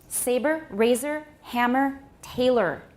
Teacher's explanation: So in these cases, you can say that it's a syllabic R if you want to, because the vowel and the R are inseparable · When we have R coloring, the R starts immediately at the beginning and it goes all the way through. · But the sound, the schwa, that has R all the way through.